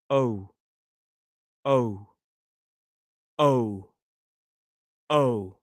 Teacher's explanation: So we start in that position here and the tongue needs to move up more to the sort of back